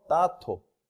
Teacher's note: 기역 또는 디귿으로 시작하는 조사와 결합했을 때 유기음화예요. 자음 축약됩니다. 보면 땅과 보조사 도가 결합돼서 따토.